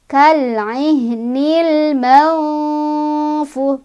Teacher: Cara bacanya nunnya dibaca samar sambil berdengung pas menuju huruf fa. Jadi bibir kita sudah siap-siap ketika mengucapkan huruf nun, udah siap-siap ke fa. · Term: ikhfa ausat